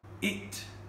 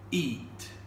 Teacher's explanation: They're both pronounced almost the same way, whereas the British speaker on the right makes a clear distinction between the shorter I sound and the longer E sound